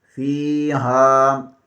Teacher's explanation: فا زیر کے آگے یا مدہ ہے، اسے ایک الف کے برابر کھینچ کر پڑھیں گے۔ ہا زبر کے آگے الف مدہ ہے، اسے بھی ایک الف کے برابر کھینچ کر پڑھیں گے